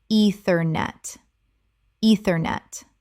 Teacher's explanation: Three syllables with the stress on the first. The e e is long.